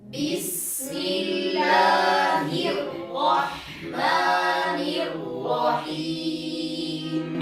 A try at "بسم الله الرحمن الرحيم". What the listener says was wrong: أيضا هنا ملاحظة ثانية أريد أن أنبه إليها أيضا في البسملة ولن أعيد تكرارها مرة أخرى، وهي التنبه إلى تخليص الحروف. تأملوا، سمعت من بعضكم ينطق الحاء قريبة من يعني وكأنها مفخمة، فيقول الرح رح. اسمعوا الصوت رح. لماذا تفخم معه صوت الحاء؟